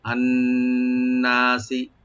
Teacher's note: নুন মুসাদ্দাদ ওয়াজিব গুন্না করে একালে টানবেন